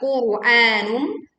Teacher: ra sukun didahului dhammah dibaca tebal